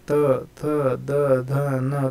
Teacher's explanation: उसी तरह से तोगट के जो तोगट के जो 5 वर्ण है, त थ द ध और ये न, ये पांचों जो है तो ये दंते है। जब हम इनका उच्चार करते त थ द ध न, तो हमारी जुबान जो है तो दांतों को जाकर लगती है